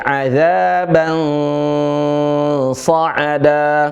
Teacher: Adzaban sa'ada, bukan bang, tapi adzaban sa'ada. Ya, suara N yang samar dan ada suara NS, ans. Bukan an, itu N yang jelas, tapi yang samar. N yang tidak jelas atau yang samar. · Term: ikhfa